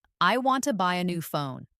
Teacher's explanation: Make want buy and phone strong and let to a new be quick and light.